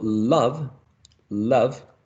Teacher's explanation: the tongue goes above to touch the alveolar ridge